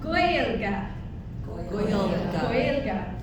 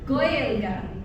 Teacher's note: It's sort of a W sound at the back of the throat, kind of a guttural.